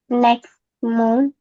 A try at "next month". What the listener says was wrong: Bukan moon. ya moon itu bulan sebenarnya, tapi kalau bulan bacanya man.